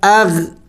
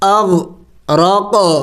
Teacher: یہاں پہ غین ساکن ہے لیکن حروف قلقلہ میں سے نہیں ہے تو قلقلہ نہیں کریں گے